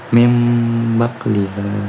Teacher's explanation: Kemudian ada iklab, yaitu apabila nun sukun atau tanwin bertemu dengan huruf ba. Cara bacanya sendiri huruf nunnya dirubah menjadi huruf mim.